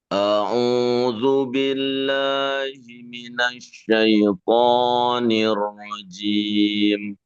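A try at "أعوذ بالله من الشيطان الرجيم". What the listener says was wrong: Syaiton juga eh, coba dikurangi lagi matnya. Syaitonir rajim. Jangan terlalu panjang. A'udzu.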